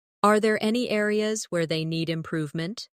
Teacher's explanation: Notice how areas where they flows, without breaking.